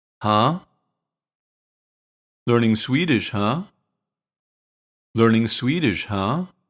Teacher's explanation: when we use it to express that we noticed something it's pronounced with a rising intonation and it's slightly long to show curiosity